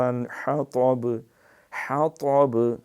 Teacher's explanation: سیصلی نارا ذات لہب وامرأتہ حمالۃ الحطب، حطب، ہا حلق سے، طب، تا پچاکے کے ساتھ، وہ دو نقطے والا تا نہ بن جائے۔